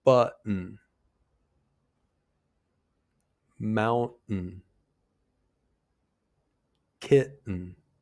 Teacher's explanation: Did you hear how the T is just barely there? That's the glottle stop. · Your mouth should be slightly open, your jaw really relaxed in a medium kind of position, and your tongue touches the roof of your mouth. But you don't need to release the T sound. Instead, there's just a really brief pause. It's more like a pause than a distinct sound, really. · The glottal stop happens before the syllabic N. That's when the N makes its own syllable. So words like button, mountain, and kitten all have glottal stops because the T comes before an N that makes its own syllable.